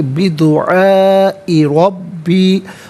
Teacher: را پر زبر ہے، را کو پر کر کے پڑھیں گے، الف پر مد کی علامت ہے دعا میں، تو ناظرین یہ مد متصل ہے، مد واجب بھی کہتے ہیں، لازم بھی کہتے ہیں۔